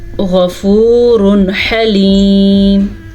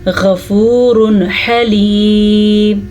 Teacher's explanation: تنوین کے اوپر تنوین کے بعد ح آ گیا تو یہ حروف ہلکی میں سے ہے، تو یہاں پہ بھی نون ساکن اور تنوین کو ظاہر کر کے پڑھیں گے. تو یہ کیسے پڑھیں گے؟ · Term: اظہار